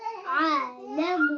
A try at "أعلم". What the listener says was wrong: आनी अब आयन को पहले ला रहे हो आयन को बाद में लाए हमजा से मिलाए आ देखिए जी यहाँ देखिए आ आ आयन क्यों उठा रहे हो आयन मूव नहीं करना ठीक है मूव नहीं है इसमें आलमु